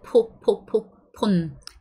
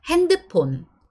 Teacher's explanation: we don't have the f sound, so we just pronounce it po-po-po-pon.